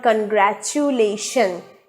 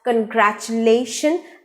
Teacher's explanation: not pronounced as oo sound it is omitted it is silenced so the word is pronounced as congratulation and stress is on the last syllable